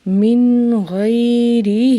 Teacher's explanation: غین کو موٹا پڑھنا ہے اور ہا کو ایک الف کے برابر لمبا کرنا ہے